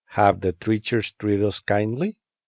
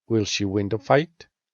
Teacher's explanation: when speaking, make a rising intonation to the end of the sentence.